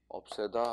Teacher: 전미사 애가 와도 없애다 하고 여전히 길게 발음됩니다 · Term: 긴 소리